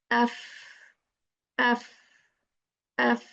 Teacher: between the inside of the lower lip and the tips of the two front teeth